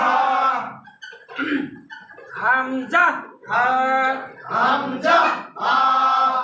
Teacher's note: 1 নম্বর মাখরাজ হলফে শুরু হইতে হামজা হা